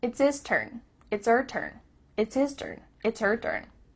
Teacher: The H at the beginning of his and her is cut off.